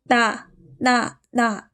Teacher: 혀가 윗 잇몸에 닿습니다. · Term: 니은